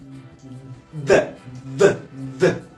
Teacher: en español la d es oclusiva la d no deja escapar nada de aire